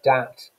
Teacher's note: a plosive sound is replacing the standard English RP fricative phoneme. You've then got assimilation, where you've got a mix-up of the consonant sounds. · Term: substitution